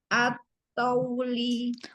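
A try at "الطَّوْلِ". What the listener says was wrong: Tauli. Ya, to-nya jangan panjang, waw yang monyong. At-tauli.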